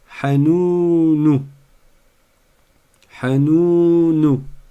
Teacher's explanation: Attention à ne pas faire des syllabes d'un même temps à chaque fois, sans prêter attention aux voyelles courtes et aux voyelles longues. La première et la dernière sont des voyelles courtes. Le ha et le nou. Ce n'est que celle du milieu qui est longue.